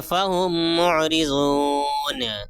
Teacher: یہاں پہ دیکھیے میم ساکن ہے، میم ساکن کے بعد دوسری میم آئی ہے، اس لیے میم کو میم سے ملا کر اخفاء کے ساتھ غنہ کے ساتھ پڑھیں گے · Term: ادغام شفوی